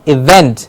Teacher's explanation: the vent gets a clear stress